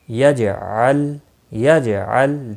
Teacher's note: دیکھو لام ساکن پر قلقلہ نہیں ہوگا، جیم ساکن پر قلقلہ ہوگا۔